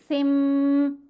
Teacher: اب ہم نے نون کی آواز کو میم کی آواز میں بدل کر پڑھنا ہے اور یہ اقلاب ہوگا، حدیثن کی بجائے سم پڑھا جائے گا۔